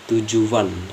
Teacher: Yang pertama tujuan itu kan tulisannya itu TUJUAN, tapi di dalam tujuan itu ada huruf W dalam tujuan sebelum U itu ada W di dalam, yaitu tujuan, ada bunyi W.